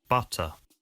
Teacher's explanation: T sounds are pronounced as hard T's in other words voiceless T sounds